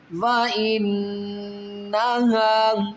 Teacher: نون یہاں پر وَإِنَّهَا پر نون ہے مشدد، یہاں پر غنہ کریں گے